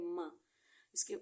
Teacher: मीम होठों के खुश्क हिस्से से अदा होता है